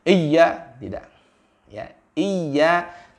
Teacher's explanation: Ya, iya ditekan sedikit, ya, tengah lidah kita, tempat makhraj huruf ya, wastul lisan dengan langit-langit atas itu menempel, ya, ditekan iya sampai dijalankan karena dia punya sifat rokhawah.